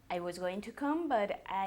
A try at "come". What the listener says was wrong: Come, no come. Come. Come. Come. Come. Come. No se dice com. Com is www.vausis.com, for example, which is our special website. Com is com, pero el verbo venir se pronuncia come. Bajando una vez más la mandíbula.